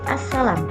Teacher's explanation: Ini terjadi asimilasi total progresif yaitu bunyi L dalam al berubah menjadi S karena diikuti oleh fonem S pada kata salam